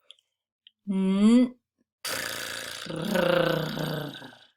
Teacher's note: I'm going to start blowing air and then at the end I'm going to put sound into it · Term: trilled 'r'